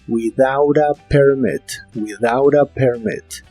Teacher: Las palabras without y a se juntan y se pronuncian como without a, como si la T fuera una R.